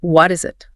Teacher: What is it? morphs into a single flowing multi-syllable word.